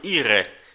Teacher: O R lá no fundo da garganta arranhando.